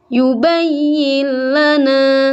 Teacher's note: ini ada nun mati sebenarnya, tapi seolah-olah tidak ada nun di sini. Seperti kalau disambung misalnya ini nunnya seperti tidak ada. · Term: idgham kamil